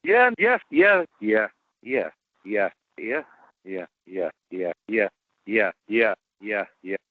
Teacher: there is a lot of movement there between uh the glide and the vowel